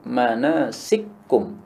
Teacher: Caranya ka diubah menjadi ak, ya. Setelah menjadi manasik, kemudian baru diidghamkan pada kaf berikutnya menjadi manasikum, sikum. Nah, inilah yang dimaksud sebagai idgham kabir.